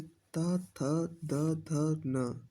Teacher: जिन वर्णों का उच्चारण करते समय जीभ का अग्र भाग हमारे ऊपर के दांतों को स्पर्श करता है उन्हें दंतीय व्यंजन कहते हैं।